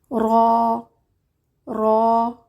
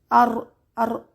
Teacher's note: را را را نہ سخت ہے نہ نرم ہے، درمیانہ حرف ہے، زبان کے کنارے جب اوپر کے 2 دانتوں کے مسوڑوں سے لگے تو ادا ہوتا ہے۔ را میں تکرار ہوتی ہے، ایک آواز جو بار بار آئے، جیسے ار ار اس طرح کی آواز آتی ہے۔